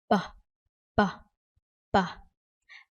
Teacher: This one is a labial sound, and it's also explosive sound.